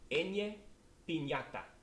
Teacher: All right, the next one is ñ, and this is going to sound like an N and a Y crammed in together in the middle of a word